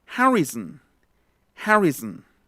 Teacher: No es son, es zn. Zn. Igual es schwa. La schwa ocurre cuando tienen mucha prominencia las consonantes que hay alrededor.